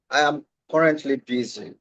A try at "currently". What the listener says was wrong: Don't open your mouth wide. Remember, we have open sounds, mid sounds, and closed sounds. So for this sound, the letter U in that word, current, it's making a mid sound. Watch my mouth, sir.